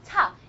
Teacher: That's why you feel when if you put your hand in front of your mouth and you say, for example, ta, you can feel it. You can feel small explosion of air. It's like an explosion, but really small.